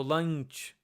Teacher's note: this is the nasal sound that comes before a palate consonant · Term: the nasal element